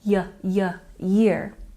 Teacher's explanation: Some people drop the Y sound and it sounds like ear. Don't make that mistake.